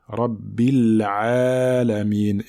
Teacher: la lettre ayn passe par la gorge, c'est une lettre qui passe par la gorge. Donc ici, il faut bien la mettre en évidence, il ne faut pas l'avaler.